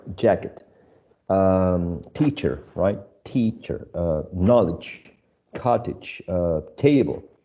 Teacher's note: All of these two-syllable nouns are stressed in the first element.